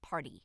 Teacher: Americans would say party. So the T becomes almost like a soft D, and your tongue flicks to the top of your mouth very, very fast. And that's a flap.